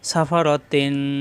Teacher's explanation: কিন্তু যা আছে তাই থাকবে তখন সাফারন এখানে কাফ আসছে এজন্য এখানে ইকফা গুন্না হবে অনুস্বারের মত গুন্না